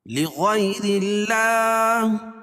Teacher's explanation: اللہ کے لام سے پہلے را کے نیچے زیر ہے تو اللہ کا لام بھی باریک پڑھا جائے گا